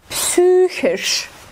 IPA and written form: ˈpsyːçɪʃ (PSYCHISCH)